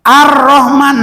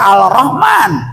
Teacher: Ar-Rahman, tidak dibaca Al-Rahman, biarpun ada lamnya. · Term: alif lam samsiah